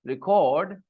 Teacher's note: When I stress the cord part, record, then it is a verb.